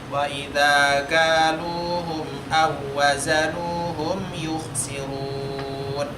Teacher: waw kedua hilang, langsung masuk ke huruf yang ketiga dan tidak boleh ditahan. Jadi artinya tidak boleh didengungkan.